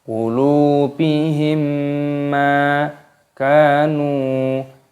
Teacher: mim sukun bertemu dengan huruf mim yaitu idgham mimi didengungkan